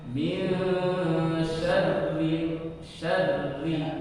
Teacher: Kalau ro-nya berharokat dilihat ro-nya harokatnya. Karena di sini kasroh maka dibaca tipis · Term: ditipiskan